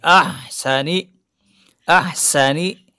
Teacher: چونکہ ہا کے بعد سین ہے، سین کا اظہار واضح کرنا ضروری ہے، سیٹی کی آواز آنی چاہیے